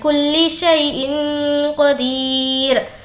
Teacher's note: تنوین کے بعد قاف ہے جو کہ حرف اخفا میں سے ہے اسی لیے ناک میں آواز کو چھپائیں گے اور ہمیں یہاں پر وقف کرنا ہے تو دال پر ہم جزم لگا دیں گے.